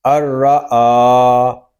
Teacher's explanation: حمزہ کو ہم ایک الف تک کھینچ کر پڑھیں گے کیونکہ حمزہ کے اوپر کھڑا زبر آ گیا ہے